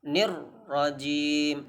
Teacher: maka harus dibaca tebal dan jangan digetarkan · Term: tafkhim